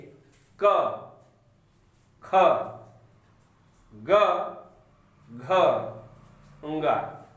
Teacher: का को बोलने में इस हथेली पर वायु की ठोकर कम लगती है और खा को बोलने में ज्यादा प्राणवायु बाहर निकलती है